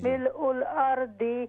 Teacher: हा नहीं है हमज़ा है, हमज़ा को क्लियर करें